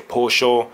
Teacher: the double l makes the sh sound